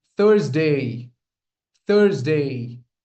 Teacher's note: The stress lies again on the first syllable. This is the th sound like we say thank you.